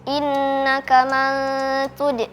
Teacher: Hukumnya adalah ikhfa haqiqi karena nun sukun bertemu dengan huruf ta dibaca samar.